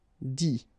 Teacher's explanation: Okay, and then the it, phonetically you pronounce i because final t is not pronounced